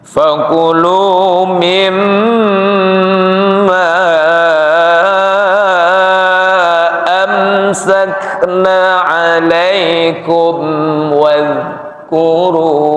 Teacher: Mim tasdidnya disebut gunnah musyaddadah diikuti dengan mad jaiz. Ya, jadi terkesannya memang panjang, seperti halnya panjangnya 3 alif.